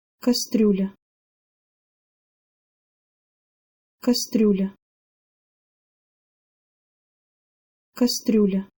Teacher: word can be a little bit more difficult to say because there are two soft consonant vowel pairs at the end of the word